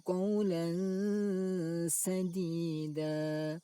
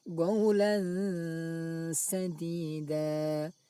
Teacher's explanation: Cara membacanya, suara tanwin dibaca samar antara izhar dan idgham, lalu didengungkan. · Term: ikhfa